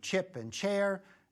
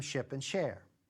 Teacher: The only difference here is timing. If I make the ch sound and stop abruptly, within about 100 milliseconds or so, then the words are chip and chair. If I hold it just a little bit longer, an extra 50 or 60 milliseconds, then it turns into ship and share. Actually, it also matters how quickly I'm saying the other words around chip and ship.